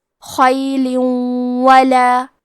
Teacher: ادغام کا معنی ہے حرف کو حرف میں داخل کرنا، تو ہم تنوین کو واو میں ملا کے غنہ اور تشدید کے ساتھ یہ حکم کو ادا کریں گے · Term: ادغام بغنہ